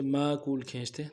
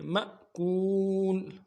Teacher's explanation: جھٹکا ہے کیونکہ الف کے اوپر ساکن ہے. مأکول اگر الف خالی ہوتا پھر کھینچتے، ماکول کھینچتے تو ایسا نہیں کرنا چاہیے، جھٹکا دینا چاہیے.